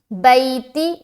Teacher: तो आगे बैती, बाया ज़बर बई, या साकिन उससे पहले ज़बर है, लिहाजा या लीन होगा, नरमी के साथ जल्द अदा करेंगे। जब भी हरूफ़ लीन में से कोई आए, चाहे वो या लीन हो चाहे वो वाव लीन हो, तो इस बात का ख्याल रखें कि आपको अपनी आवाज़ में नरमी रखनी है।